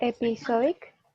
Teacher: And the stress is the third syllable.